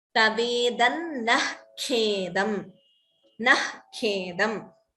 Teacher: Visarga followed by Kha would be Jihva Muliya. So the Visarga is chanted as Tavedan Nah Khedam.